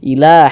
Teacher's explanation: Alif kecil seperti ini maka Mak huruf tersebut dibaca panjang sehingganya la dibaca panjang Mad thobii panjang dua harakat